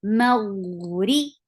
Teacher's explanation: Ghain is heavy. Ghain will get sifa of rakhawa. The sound should flow very well.